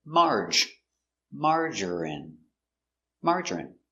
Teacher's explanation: 3 syllables, stress on the first syllable.